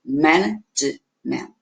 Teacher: quando eu pronuncio ela fica só com 3 sílabas. Management, porque eu tenho schwa no último.